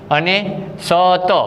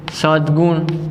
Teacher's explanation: હવે આ ત વર્ણ છે એ અઘોષ વ્યંજન છે, અઘોષ વ્યંજન, અને ત પછી આવતો ગ વર્ણ છે એ ઘોષ વ્યંજન છે. આમ અઘોષ પછી ઘોષ આવે છે તો અઘોષના સ્થાને તેના વર્ગનો ત્રીજો વ્યંજન આવે તો તનો થશે દ. તો શબ્દની સંધિ થશે સદ્ગુણ.